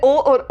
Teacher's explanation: तो डिअर ये हमारे कंठ प्लस ओष्ठ से बनकर आ रहा है। कंठ प्लस होठ।